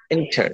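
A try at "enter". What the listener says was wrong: ইন্টার, ইন, আমরা কি পড়ছি আগে? এটার উচ্চারণ আমরা এর আগে পর্যন্ত পড়েছি ইন, এন্টার, এন্টার না, ইন, ই এন থাকলে ইন উচ্চারণ হবে, ইন্টার, ইন্টার, ইন্টার।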